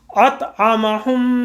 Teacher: ایک دم آواز کو ناک میں لے گئے، وہاں پہ ہم نے اسے گنگنایا 2 سیکنڈ کے لیے اور آواز ناک سے باہر آئے گی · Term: غنہ